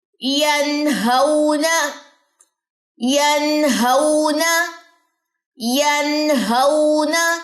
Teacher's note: نون میں جہر کی صفت ہے، سانس کو بند کرے. ینہون، آواز کو بلند کرے.